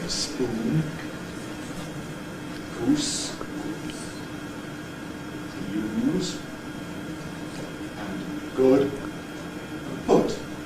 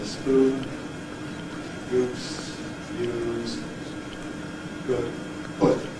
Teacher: But nowadays people often just don't bother to round their lips.